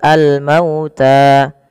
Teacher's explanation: alif lam yang tertulis dan dibaca dengan jelas suara lamnya. Kemudian apa? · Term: alif lam qamariah